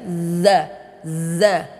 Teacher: huruf zal, ujung lidah dengan gigi seri atas kita.